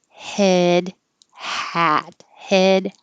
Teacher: head is higher than hat your jaw is higher and your tongue is a little higher